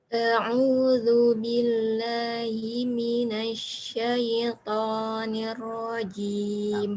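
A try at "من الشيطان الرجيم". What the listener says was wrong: Perlu dikit itu panjangnya. Minasyaitonir rajim.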